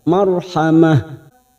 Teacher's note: huruf ro sukun yang sebelumnya ada harakat fathah kita baca tafkim atau tebal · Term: tafkhim